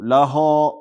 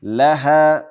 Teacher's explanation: دویم دا چې ها نه وروسته الف باریک ویل سي. لاها به نه وایو لاها، بلکې لها باریک.